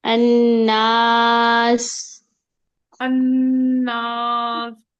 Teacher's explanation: سین کے اندر سیٹی لائیے